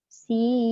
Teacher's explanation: Dah tak ada bunyi nun. Sebab dah gugur nun tadi disebabkan hukum idgham ma'al gunnah kamil.